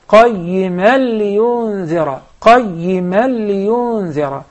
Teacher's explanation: For instance, when you recited the second verse, قَيِّمًا لِيُنذِرَ, you did the idgham, but there was a ghunna, like one movement. There is not supposed to be any ghunna in this case because the tanween is followed with the lam. So you must say right away, قَيِّمًا لِيُنذِرَ, قَيِّمًا لِيُنذِرَ.